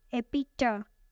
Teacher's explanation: This word is commonly mispronounced because the third syllable has the schwa. Schwa is the sound.